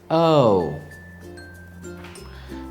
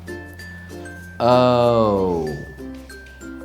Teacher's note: again oh now i'll do it again but very slowly so you can hear how i slide from the first vowel sound to the second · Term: diphthong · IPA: /əʊ/